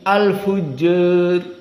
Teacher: tidak bisa membaca fathah tapi condong kepada kasrah sedikit